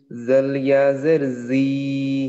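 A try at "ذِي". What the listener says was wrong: তাহলে কিন্তু হলো না, আমাদের দুইটাই কিন্তু টান সমান হয়ে গেল, হরকতেও যা হলো মাদেও তাই। হ্যাঁ, জাল জের না জ নয়, ও হ্যাঁ, ওই যে জিহ্বার আগা সামনের উপরে, জিহ্বার আগা।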